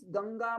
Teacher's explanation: अनुस्वारस्य अग्रे यदि ग लेटर वर्तते, ग letter belongs to कंठस्थान, and the last letter of kanthasthana or the ka varga will be ng. So this anuswara will be pronounced along with ng letter। और इसको, इसके आगे वाला, इसमें ग में आने वाला जो वॉवल है अ, वो कंठ होता है, अकार कंठस्थानीय इति कृत्वा यह अनुस्वारः विद्यते तत्र कंठ नासिकत्वम् आयाति, परसवर्णश्च भवति इति तस्य आश्रयस्थानिनं ज्ञातव्यम्।